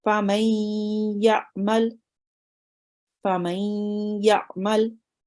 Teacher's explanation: the noon sakin, which normally makes a nasal sound, is joined onto the ya.